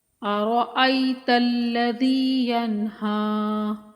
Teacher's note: ان الی ربک الرجعی، ارأیت الذی ینہی، حمزہ کو بغیر کھینچے اور را کو پر پڑھیں گے